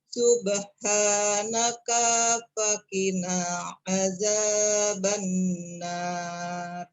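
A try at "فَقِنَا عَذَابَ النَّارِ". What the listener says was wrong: Faqina, na-nya yang dibaca panjang. Subhanaka faqina.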